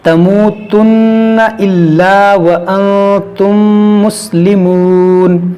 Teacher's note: میم ساکن کے بعد دوسری میم ہے، یہاں پر ادغام شفوی کریں گے